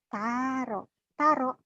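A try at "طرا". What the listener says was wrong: Jangan panjang. karena ini kosar bacaan pendek.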